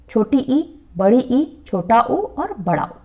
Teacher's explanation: जिन स्वरों के उच्चारण में मुख द्वार सबसे कम खुलता है, संवृत स्वर कहलाते हैं